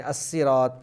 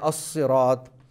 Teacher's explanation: سیٹی کی آواز کے ساتھ، اس کے اندر صفت صفیریہ پائی جاتی ہے، تو آپ سیٹی کی آواز سے پڑھیں گے، صاد کو آپ موٹا کر کے پڑھیں گے